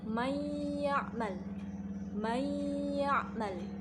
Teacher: Nah, idgham bi gunnah ini terjadi apabila nun sukun atau tanwin bertemu dengan huruf mim, nun, waw, dan ya. Cara membacanya yaitu dengan menggunakan gunnah 1/2 alif.